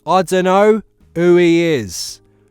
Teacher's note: Sometimes the H is dropped, sometimes it's not.